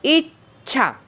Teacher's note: हे जर का दीर्घ असेल तर दीर्घ, उदाहरणार्थ इच्छा. ई हे लघु आहे पण तरीसुद्धा इच्छा बोलताना ईवर आघात होतो म्हणून ई लघुची गुरु झाली, आणि छा हा गुरुच आहे.